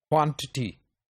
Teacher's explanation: T and T are weaker syllables, so stress goes to the first syllable and the word is pronounced quantity, right?